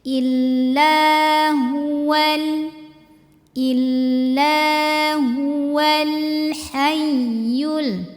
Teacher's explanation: hual langsung ke lam yang sukun hati-hati lamnya enggak boleh mantul